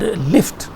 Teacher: If you create this sound, O sound, as you have in the word lift, the air doesn't pass through the central area, and it passes through the lateral sides. In pronouncing O sound, the tip of the tongue touches the ridge, closing it, but the sides remain open. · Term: lateral approximant